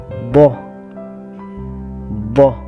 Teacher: Huruf bo ini keluar dari salah satu tepi lidah, baik tepi kanan begitupun tepi kiri, menempel pada dinding gigi geraham atas. Ya, bunyinya boh, boh.